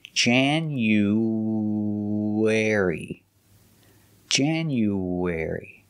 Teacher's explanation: When we link the oo sound to the airy, you have the w sound, the w sound, w, w.